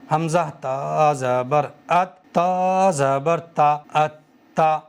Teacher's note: دوسری مرتبہ خود اس کے اوپر جو بھی زبر زیر پیش ہو یا 2 زبر ہوں، 2 پیش ہوں، 1 زبر ہو، اس کے ساتھ میں پڑھ دو، جیسے حمزہ تا زبر ات، تا زبر تا ات تا۔ 1 مرتبہ میں نے اپنے سے پہلے والے حرف یعنی حمزہ کے ساتھ میں ملا کے تا کو پڑھ دیا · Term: حرف مشدد